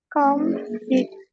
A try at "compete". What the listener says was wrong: Yeah, this E is long, please. So compete. Exactly.